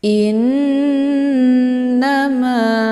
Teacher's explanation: hamzahnya ditekan kemudian dileburkan ke dalam huruf nun sambil ditahan sehingga terbentuk suara yang mendengung. Ditahannya lebih kurang 2 harakat ya. · na dibaca pendek, ma dibaca panjang, ada alif sebelumnya harokat fathah. Ini dinamakan dengan mad tabi'i zahiri, dibaca panjang 2 harokat. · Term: gunnah musyaddadah